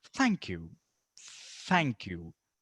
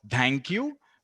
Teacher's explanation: teeth don't bite on it don't do that just very slightly the tip of your tongue should be touching your upper and lower teeth like this and then just try and force aid out and